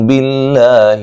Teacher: باللہ لفظ اللہ کو باریک پڑھیں گے، اس سے پہلے زیر ہے